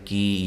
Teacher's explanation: یا مدہ ہے، وقف کی صورت میں آپ مد کر سکتے ہیں